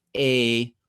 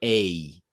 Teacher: Americans, a lot of times they diphthongize